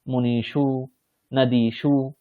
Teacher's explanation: এর যে সকার সেখানে মূর্ধন্য সকার হয়ে মুনিশু নদীসু এখানে দেখুন দীর্ঘ ইকারের পর আছে এবং অন্তিম বর্ণ নেই কারণ শেষে উকার আছে তাই দন্তীয় সকারটা কি হয়ে গেল মূর্ধন্য সকার হয়ে গেল